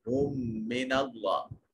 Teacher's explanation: ہم من اللہ، ہا کو دوسرے میم سے ملائیں گے، یہ دو میم ایک جگہ پر اکٹھے آ گئے تو یہ ادغام شفوی ہو گیا۔ پہلا میم ساکن تھا، دوسرا متحرک، تو ساکن میم کو متحرک میم میں مدغم کر دیا۔ اور میم مشدد ہے اور نوازب ہوگا۔